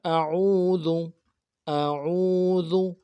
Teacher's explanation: عین کو واضح کرنا ہے، گلے کے اندر جماؤ کے ساتھ ادا کرنا ہے، ذال کو باریک کرنا ہے، ذو۔